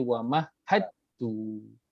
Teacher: dal dan ta makhrajnya berdekatan, dal ta hujung lidah yang kita letakkan di langit, maka dia sekalikan jadi wa mahad tu. So sebab itu diletakkan syaddah pada huruf ta tu.